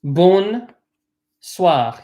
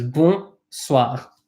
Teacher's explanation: be careful not to pronounce the N in bon